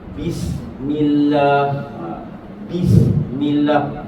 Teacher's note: Bis makraj buat syafatai, dua bibir tutup dulu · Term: huruf ba